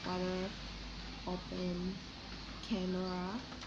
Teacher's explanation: Practically everyone would agree that the first syllable of words like water, open, camera is stress.